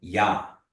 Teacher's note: you're just nasalizing the A